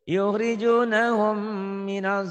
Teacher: mim ada gunahnya, kan ditahan